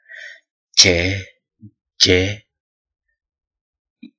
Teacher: kemudian selanjutnya adalah mediopalatal Mengapa disebut sebagai mediopalatal oleh karena ee terjadi pertemuan antara tengah lidah dengan langitlangit keras kita